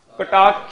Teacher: ਨਹੀਂ, ਐੜੇ ਨੂੰ ਬਸ ਆ, ਕਟਾਖਿਆ ਨਹੀਂ ਬੋਲਣਾ। ਕਟਾਖ ਅ ਦੀ ਸਾਊਂਡ ਆਏਗੀ, ਆ ਦੀ ਸਾਊਂਡ ਨਹੀਂ ਆਏਗੀ